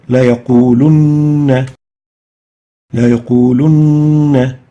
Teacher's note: This noon with shadda and fatha is given a Ghunnah for 2 units.